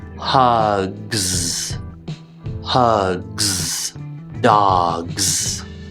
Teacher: dogs so again you do want to make both sounds but focus more on the z sound and just think of the g sound as a little stop on your way to that sound · the back of my tongue comes up but then i squish my mouth and my tongue slides up into that z position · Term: gs ending sound